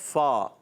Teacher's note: اس کا مخرج جو ہے اوپر والے دانتوں کے کنارے جب نیچے والے ہونٹ کے تر حصے سے لگتے ہیں تو ادا ہوتا ہے